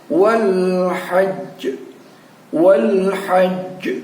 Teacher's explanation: Ada j yang keluar, itu adalah pantulan dalam posisi dimatikan atau disukunkan karena bertemu dengan tanda wakaf. Selanjutnya kita perhatikan di sini, inna hadza lahuwal qasasul haqq. · Jim ini juga termasuk salah satu huruf qalqalah, maka caranya adalah kita pantulkan pada ujungnya